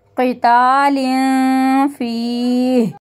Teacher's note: या मद्दा को खींचते हुए रुकेंगे